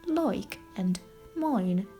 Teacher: the sound I is replaced by oi